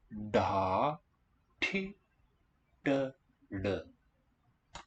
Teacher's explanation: All have the curled tongue tip. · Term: retroflex